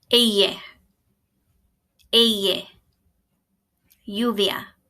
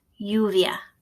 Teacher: When two L's are together, they don't sound like an L, they sound like a Y.